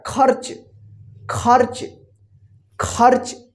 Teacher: शब्द आपको लिखना है खर्च खर्च नहीं होता है खर्च देखिए ख के बाद जो है ना आधा र का जल्दी उच्चारण हो रहा है